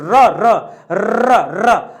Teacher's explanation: आपको लगेगा कि आपके जीभ बार बार लड़ रही है और कंपन वहां पैदा हो रहा है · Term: प्रकंपित व्यंजन